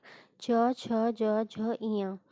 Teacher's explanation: ये तालु से बोले जाते हैं। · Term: चवर्ग